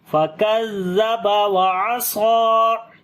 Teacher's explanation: صاد کو موٹا پڑھیں گے اور لمبا بھی کریں گے · عین کو گلے کے درمیان والے حصے سے پڑھیں گے